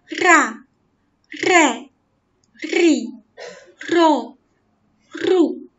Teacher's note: 气流不断冲击舌尖，使它颤动而发出来的音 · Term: 颤音